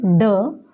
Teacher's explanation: ये वो व्यंजन होते हैं जिनके उच्चारण करते समय जीभ पीछे की ओर जाकर एक झटके के साथ आगे की ओर आती है